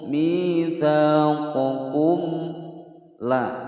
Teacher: Mim sukun bertemu lam, dibaca dengan jelas. Hukum bacaan izhar syafawi.